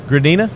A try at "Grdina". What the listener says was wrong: Not Gura, it's Gur.